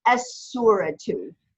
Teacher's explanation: you still pronounce the aleph, but you don't pronounce the lam. It's assimilated into the sod. So it becomes as-suratu. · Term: sun letter